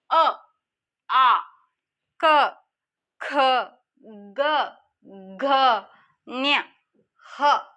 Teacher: ಕಂಠ್ಯ ಅಂದರೆ ಕಂಠದಲ್ಲಿ, ನಮ್ಮ ಗಂಟಲಿನಲ್ಲಿ ಉತ್ಪತ್ತಿ ಆಗ್ತಕ್ಕಂಥ ಅಕ್ಷರಗಳನ್ನು ನಾವು ಕಂಠ್ಯ ಅಂತ ಹೇಳ್ತೀವಿ.